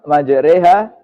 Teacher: Dari ro menjadi re. Memiringkan fathah ro ke kasroh. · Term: Imalah